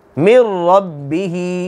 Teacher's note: را کے اوپر زبر آگی، را موٹی ہوگی